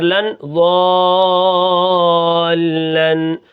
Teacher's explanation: ضاد کو میں موٹا کروں گا اور اس کے اوپر زبر ہے اور مد بھی کروں گا کیونکہ آگے تشدید ہے، اس کو مد لازم کہتے ہیں اور یہ کلمی مثقل ہے یعنی کلمے کے اندر ہے۔